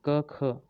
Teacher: क, ख बोलते टाइम जो आवाज़ आ रही है वो कंठ से आ रही है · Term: कंठ ध्वनियाँ